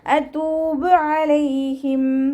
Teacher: താന്നായി പോവരുത്. ത മഖ്റജ് നമ്മുടെ നാവിൻ്റെ അറ്റം മേലെ മുൻപല്ലിൻ്റെ മുരടിൽ കൊണ്ടുപോയി വെച്ചിട്ട് ഉച്ചരിക്കുക